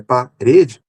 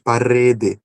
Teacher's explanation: O TEP, neste caso de parede, que é um R rápido, ou um R mais vibrante, parede, pronúncia de alguns lugares, né?